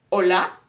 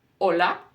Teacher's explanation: letter H is completely silent it disappears